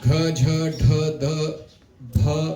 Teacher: ये voiced and aspirated both है।